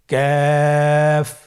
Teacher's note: কাফের মাখরাজ হলো জিহ্বার গোড়া থেকে একটু আগে বাড়িয়ে তার বরাবর উপরে তালির সঙ্গে লাগিয়ে উচ্চারিত হয়।